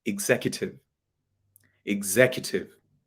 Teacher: But do you know the stress is actually on Zek, not Q.